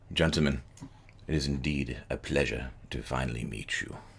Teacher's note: And over the noise of the trains and the activity, he speaks to you in this sort of soft, sibilant whisper that somehow carries without any sort of effort